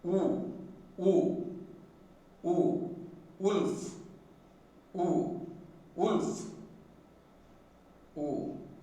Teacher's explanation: Again, oo is produced by raising the back of the tongue to 3/4 of the height and sounding. When this phoneme is produced, the lips are closely fully rounded.